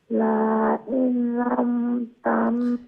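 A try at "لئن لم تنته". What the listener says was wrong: আচ্ছা লা এটা কি লম্বা হবে তাহলে লা ইন বলবেন না লা ইল্লাম লা ইল্লাম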